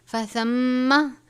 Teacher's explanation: میم مشدد ہے، غنہ کریں گے.